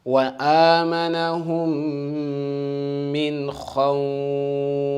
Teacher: Kha is one of the letters of full mouth. Okay? Therefore, we have to pronounce it in full mouth.